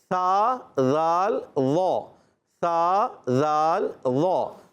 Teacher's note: زال کا مخرج ہے زبان کا سرا اوپر کے دانتوں کے اندرونی کنارے یا بیرونی کناروں سے ادا کر سکتے. اندرونی کنارے ہوں یا بیرونی کنارے، دونوں سے ادا کر سکتے ہیں.